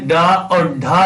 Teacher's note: डा और ढा जो होती, ये वाली दोनों उत्क्षिप्त ध्वनियां होती हैं